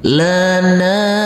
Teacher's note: huruf nun yang berfathah a bertemu dengan huruf alif yang tidak berharokat, juga kita baca panjang dengan panjang 2 harokat